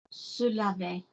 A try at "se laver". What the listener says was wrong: Little bit more volume on the bottom one. See it as a swing. Can I remind you, it's not about the note. It could be the same note. The one sounds higher because it's a tighter, higher frequency.